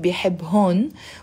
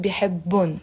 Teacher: Notice in the Lebanese dialect, we're not pronouncing bihibhun. We just pronounce it bihibbun. The H remains silent.